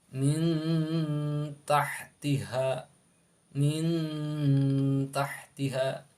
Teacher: dibacanya samar ya antara idhar dan idgham tapi ee samarnya dekat sekali ya dekat dengan huruf ee yang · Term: ikhfa aqrab